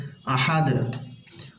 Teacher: এখানে যেহেতু পেশ আছে দুই পেশ তাই আমরা দালটাকে সাকিন করে দিব এবং কলকলা করে দেব সাকিন হলে তো আমরা জানি কলকলা করতেই হবে আহাদ ওয়ালাইয়ালাহু আহাদ